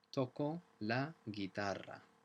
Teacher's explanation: notice the double R in guitar makes it a rolling R sound.